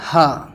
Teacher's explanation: اس کو بالکل منہ کے جو ہے آواز منہ کے آگے سے نکالیں